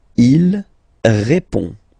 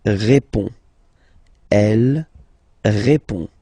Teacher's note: final D is not pronounced. You only have this on nasal sound at the end.